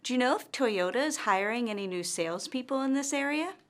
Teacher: our intonation rises at the end of this yes-or-no question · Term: rising intonation